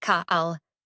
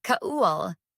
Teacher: let the back of your tongue lift at the end. Do not push the tip up. Let the back do the work.